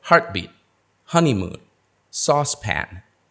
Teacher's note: For the compound nouns, we stress the first syllable.